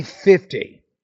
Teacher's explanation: If you want to say 50%, you want to put more stress in the first syllable. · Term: word stress